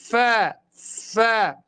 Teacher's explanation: أضم الشفة السفلى مع الشفة العليا، ثم أدفع الهواء من الداخل للخارج وأنطق الفاء. فاء فاء. أضم الشفة السفلى مع العليا والهواء من الداخل بقوة، يخرج معي حرف الفاء صحيحا.